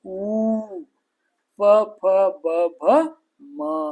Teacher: ತುಟಿಯ ಸಹಾಯದಿಂದ ಹುಟ್ಟುವುದರಿಂದ ಇವಕ್ಕ ಓಷ್ಠ್ಯ ಅಕ್ಷರಗಳು ಅಂತ ಕರೀತಾರೆ.